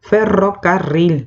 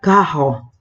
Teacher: no suena una R fuerte, es una R afrancesada, resbalosa